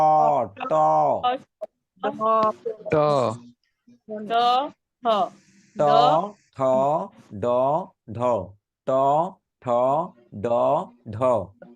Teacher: মূর্ধা থেকে যে কয়টা বর্ণ উচ্চারিত হয় মূর্ধন্য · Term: মূর্ধা বর্ণ